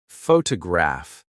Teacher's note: photograph, noun, is stressed on the first syllable